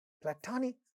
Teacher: So, platonic, we know that this syllable is stressed, but it so happens that this has a ta sound in the initial position of this stressed syllable. Therefore, it is getting aspirated.